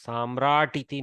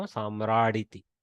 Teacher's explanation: Samrat has become Samrad and then iti. Okay, so it's softened to a dakara. Samratiti, no, Samraditi. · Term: takara to dakara